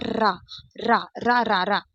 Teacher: र बोलने में थरथराहट एक कंपन सी होती है। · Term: प्रकंपित व्यंजन